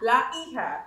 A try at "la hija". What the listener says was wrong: Remember, no H sound. Hija.